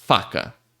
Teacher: o ar simplesmente vai passar entre o seu lábio e o dente de cima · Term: som do F